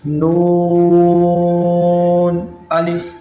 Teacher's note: نون کی مقدار بھی 5 الف ہے، اس کو 5 الف ہی کھینچیں گے